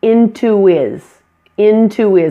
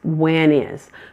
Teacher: There's no H sound in there. When is instead of when his, when is.